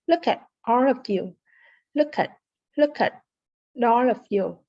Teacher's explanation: the T in at is what we call a flap T.